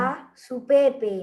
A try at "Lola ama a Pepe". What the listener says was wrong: no hay su Pepe ahí. Ahí no está ni una S ni una U.